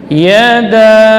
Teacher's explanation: Maka menjadi mad jaiz yang dipanjangkan boleh sampai 5 ya, 4 atau 2 harakat. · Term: mad jaiz munfasil